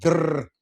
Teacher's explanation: that roll, that trill of the R